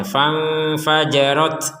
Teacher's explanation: Yang perlu diperhatikan di sini adalah huruf ta ini ada nafas yang keluar ya.